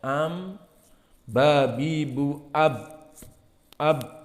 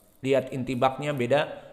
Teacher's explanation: Maka bedanya ba aqwa intibaqan minal mim. Maka ba lebih kuat, mim lebih ringan.